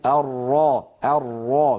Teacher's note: لاحظوا بأن اللسان في الراء المفخمة قد تقعر وسطه وارتفع أقصاه قليلا، وأيضا تضيق الحلق، وذلك برجوع لسان المزمار إلى الخلف قليلا.